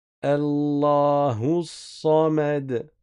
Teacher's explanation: le alif je le prononce pas je passe du hu directement au sad. Pourquoi le lem je ne le prononce pas non plus parce que la lettre qui vient après est solaire.